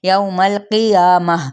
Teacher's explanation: میم کی زبر کو لام کے ساتھ ملائیں گے، قوف حروف متعلیہ میں سے، یا پہ الف مدہ کا قائم مقام ہے، جس کو ایک الف یا دو حرکات کے برابر کھینچیں گے۔